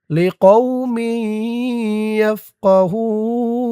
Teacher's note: ওয়াকফ করার কারণে পেশের পরে ওয়াও সাকিন এক আলিফ টান তিন আলিফ হয়ে গেছে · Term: মধ্যে আরজি